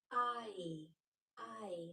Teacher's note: when you say the long sound of i, your mouth changes shape and it ends up with that e sound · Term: diphthong